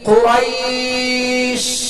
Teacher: شین کو ادا کرتے ہوئے آواز منہ میں پھیل جائے ، آواز منہ میں پھیل جائے، یعنی قریش، اور زیادہ دیر